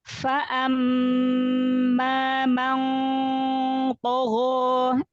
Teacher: Ikhfa-nya tebalkan karena nun sukun ketemu huruf to.